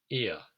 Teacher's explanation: of the diphthongs combines E and to make ear yeah so that ear sound is two vowels which come together as one vowel sound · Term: dipthongs